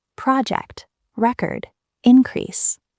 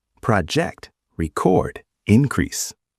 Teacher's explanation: Nouns have the stress on the first part, project, record, increase. Verbs have the stress on the second part, project, record, increase. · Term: word stress